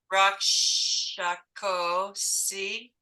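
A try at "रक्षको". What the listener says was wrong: You almost wanted to say Rakshko and turn it into Hindi.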